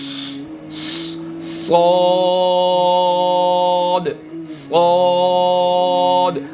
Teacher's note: सौद को प्रैक्टिकल जब हम अदा करेंगे तो सिटी की आवाज़ आएगी, लेकिन ये सिटी सीन के बनिस्बत जो है वो मोटी होगी। · सिटी के साथ अदा होगा और मोटा अदा होगा